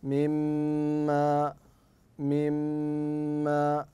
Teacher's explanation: ان تركن على الميم تقف عليها وقفه يسيره بمقدار حركتين ثم تتعداها الى ما بعدها فتقول مما مما مما مما من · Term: ميم مشدده